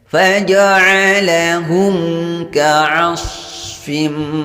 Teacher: Perhatikan di sini ada mim sukun berhadapan atau bertemu dengan huruf selain mim dan ba. Di sini mim sukun bertemu dengan huruf kaf. Maka dibaca dengan jelas atau terang. Hukum bacaannya izharus syafawi, tidak boleh mendengung.